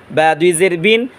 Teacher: বা ঠোঁটের ভিজা অংশ থেকে উচ্চারণ করব